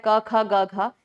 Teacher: क, ख, ग, घ है ना? ये किससे आता है? ये हमारे कंठ से आता है।